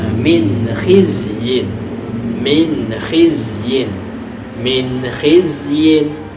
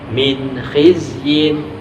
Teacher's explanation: Tidak boleh dibaca min khizyin, tidak boleh ditahan ya, harus disegerakan atau dibaca jelas min khizyin.